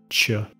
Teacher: El sonido ch combina el sonido t con sh para formar el sonido ch.